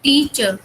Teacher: और जो फर्स्ट वाले को जब हम बोल रहे हैं टी, तो ये उससे लॉन्गर भी है सेकंड वाले से। टी को हम ज्यादा टाइम ले रहे हैं बोलने में और चर को कम टाइम दे रहे हैं